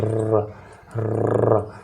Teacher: हवा को जबान पर लुढ़कते हुए बोलते हैं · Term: प्रकंपित व्यंजन